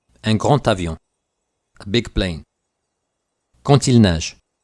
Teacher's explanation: When making la liaison, the sound of some consonants will change from their original sound. The final D in grand and con will sound like a T.